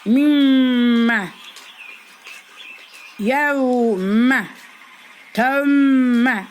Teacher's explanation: Sakin mimden sonra harekeli bir bu mim mim harfi bulunursa bu ilk bu iki mim birbirine katılarak gunneli okunur. Yani mimme bu iki mim birbirine katılarak gunneli okunur.